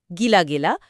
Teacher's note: সাধারণভাবে দেখা যায় আগের ইকার তার পরের আকে একারে বদলায় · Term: স্বরসঙ্গতি